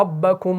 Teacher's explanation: کیونکہ یہاں پر را جو ہے یہ مفتوح ہے. جب آپ کا را زبر کے ساتھ ہو تو را کو آپ نے موٹا پڑھنا ہے